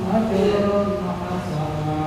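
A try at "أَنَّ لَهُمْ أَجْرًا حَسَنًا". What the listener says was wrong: Oke, jadi dengung itu hitungan keempat baru pindah ya, jangan kecepatan dengung itu.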